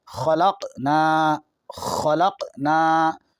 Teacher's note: قاف حرف قلقلہ ہے، اس پہ جزم ہے، آواز لوٹے گی